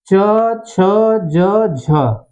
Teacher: आते हुए जो उच्चारण के अंग है उच्चारण अवयव है उनका सबसे पहले स्पर्श करता है उसके बाद उनके उनके साथ संघर्ष करता है घर्षण करता है तब बाहर निकलता है जिससे इन वर्णों का उच्चारण होता है इन व्यंजनों का उच्चारण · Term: स्पर्श संघर्षी व्यंजन